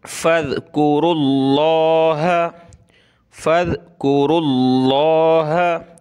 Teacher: لفظ اللہ سے پہلے را پر پیش ہے تو موٹا کریں گے